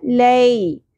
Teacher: یا ساکن تو یہ یا لین ہے ٹھیک ہے تو نرمی سے ادا ہوگا